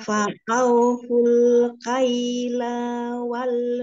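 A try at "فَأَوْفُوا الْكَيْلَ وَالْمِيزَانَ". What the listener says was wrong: Lamnya pendek. Afwan, lamnya pendek satu harokat.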